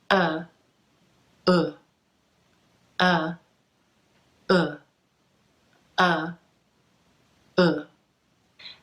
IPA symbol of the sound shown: ʊ